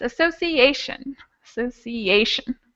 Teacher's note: So the rule says, and the rule applies here, that the letter A is going to be the stressed one because it comes right before the shun sound